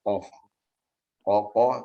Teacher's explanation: Adapun dia di pangkal langit-langit yang lembek ya, qaf. Sedangkan kaf sudah masuk pada langit-langit yang keras.